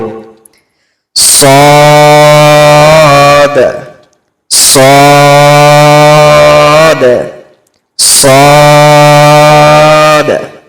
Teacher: সদকে উচ্চারণ করার সময় আমরা দাঁতের গোড়া আর জীবের আগা মিশিয়ে পড়ব আর সদ উচ্চারণ করার সময় সেটাকে আমরা মোটা করে উচ্চারণ করব